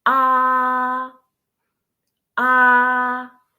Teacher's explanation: so it's flat and straight. Okay, and think of it as holding a steady note. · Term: first tone